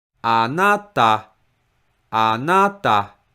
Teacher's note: And the stressed mora is pronounced with high pitch, na. And the last mora is pronounced with low pitch